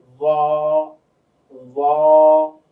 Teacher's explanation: এই যে বর্গাজ্য দিয়ে বোঝানো হয়েছে, কিন্তু আদৌ বর্গাজ্যের সাথে জ মিলবে না। জ জ জিহ্বার আগাটা উপরের দাঁতের আগার সঙ্গে গিয়ে লাগবে।